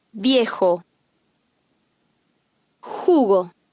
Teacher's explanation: The Spanish J has a hissing H sound.